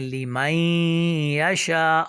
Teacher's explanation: ہم نے نون کو جو ہے وہ ضم کر دیا ہے، ملا دیا ہے یا کے ساتھ. نون ساکن کے بعد یا حروف یرملون میں سے آیا ہے، حروف ادغام میں سے آیا ہے، تو ہم نے ملا دیا نون کو یا کے اندر، تو اس کو ادغام کرنا کہتے ہیں.